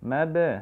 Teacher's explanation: Insanu, sa-nya juga panjang dua harokat ya. Idza mab, mab di sini ada huruf mim ketemu ba, qalqalah ya. Mab, seperti itu.